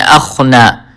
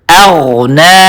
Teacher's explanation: غین کی آواز کو ظاہر کرنا ضروری ہے. اکثر لوگ اس کو خا پڑھتے ہیں اخنا, تو اغنا پڑھنا ہے اغنا.